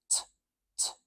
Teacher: when a t- sound is a true T sound there's a little puff of air that comes out after it